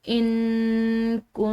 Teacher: तो हमने इसको मफी पढ़ना है और साथ में यह नून मुशदिद है। मुशदिद नून पर गुना करेंगे।